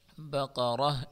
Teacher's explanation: اس را کو ہم پر پڑھیں گے